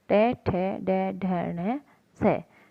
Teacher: तीसरा, ट वर्ग। ट वर्ग के साथ साथ स का भी उच्चारण है वो मूर्धन्य यानी मुख के बीच से किया जाता है